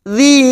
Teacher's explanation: dzi kita panjangkan lima harakat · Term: Mad Jaiz munfasil